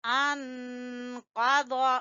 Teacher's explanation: ہم پڑھیں گے الذی انقض، انقض، یہاں پر بھی اخفا ہوگا، قاف کو بھی پر پڑھیں گے اور ضاد کو بھی پر پڑھیں گے